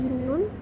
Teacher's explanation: Lalu untuk konsonan nyin, sementara itu konsonan nyin itu merupakan bunyi nasal atau sengau yang dihasilkan ketika udara mengalir melalui rongga hidung. Bunyi ini berasal dari ujung lidah yang menyentuh langit-langit mulut.